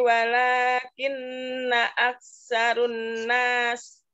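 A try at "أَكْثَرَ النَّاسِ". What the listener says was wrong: Aksaro, bukan ru. Umi, ladu, keluarkan lidahnya Umi.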